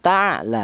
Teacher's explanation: Maka cara bacanya ini huruf ain yang mati ini dibaca jelas. Ta ya huruf yang keluar dari tenggorokan semuanya huruf halak atau huruf izhar yaitu cara bacanya dibaca jelas. · keluarnya huruf ain berasal dari tenggorokan bagian tengah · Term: izhar halqi, idhar halqi